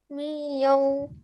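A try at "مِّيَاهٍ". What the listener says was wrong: We need to make sure you make that 2-second nasal sound here. Again, make sure you have a 2-second nasal sound because there's a tanween on that meme as well. So make sure you make a nasal sound there. We need to make that really clear.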